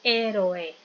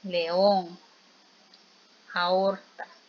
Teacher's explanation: hay vocal abierta más vocal abierta y forman sílabas diferentes